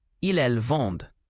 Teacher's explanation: The ent ending in ils, elles vendent is silent